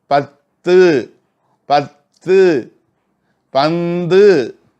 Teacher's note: நாக்கு பாருங்க எப்படி போய் அந்த நுனி, அதாவது என்ன சொல்லுவோம், இந்த கோரை பற்கள் ஓரத்தில் இருக்கிறது, நடுவில் இருக்கிறத வந்து வெட்டுப்பற்கள்னு சொல்லுமா, அந்த வெட்டுப்பற்கள் நடுவில் இருக்கிற வெட்டுப்பற்களுடைய உள்பகுதியில் நாக்கு போய் உராயுது பாருங்க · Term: நா நுனி